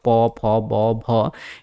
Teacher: प वाले वर्ग मतलब प फ ब भ, इन सब का उच्चारण किससे होता है? ओठ से, ओष्ठ से। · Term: प वर्ग